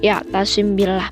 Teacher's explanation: mim mati bertemu dengan huruf ba hukum ini dibaca dengan cara samar-samar pada bibir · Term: Ifa syafawi